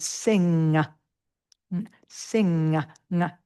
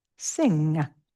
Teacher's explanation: It's a n sound that you make by the tongue uh coming up into the roof of the mouth.